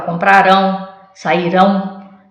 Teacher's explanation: então nesse caso aqui eu tenho a última sílaba forte o a última sílaba tônica